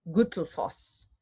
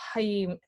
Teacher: the double L in Icelandic makes a TL sound.